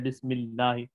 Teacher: اصولی طور پہ یہاں پہ لفظ اللہ کو باریک پڑھنا ہے